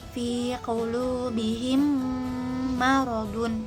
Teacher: mim sukun diikuti oleh huruf mim, maka mim sukun dibaca mendengung atau gunnah. Durasinya 2 harokah. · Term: idgham mimi